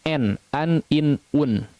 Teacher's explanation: mengucapkan nun sukun ataupun tanwin ya dengan jelas artinya tanpa disertai dengan ghunnah yang dipanjangkan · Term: izhar